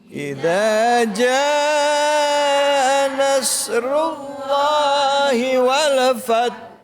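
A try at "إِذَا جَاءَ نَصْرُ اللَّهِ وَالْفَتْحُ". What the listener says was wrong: Haknya dikeluarin, Bun. Itu namanya tawallud. Artinya ngelahirin, berarti haknya kudu nongol. Fatah.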